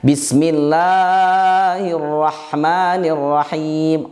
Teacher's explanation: la-nya kepanjangan, harusnya 2 harokat menjadi 3 harokat, menjadi 4 harokat. Ini khafi kesalahannya, tetapi kesalahan khafi ini bisa diketahui oleh banyak orang.